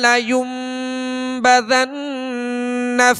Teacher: نون مشدد ہے، اس میں غنہ کریں گے